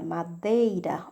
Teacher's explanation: Já na palavra madeira, o som do E foi maior do que do I. Por isso, ele recebe o nome de semivogal. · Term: ditongo